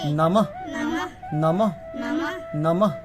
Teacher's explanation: বিসর্গ থাকলে একটু হ উচ্চারণ করতে হবে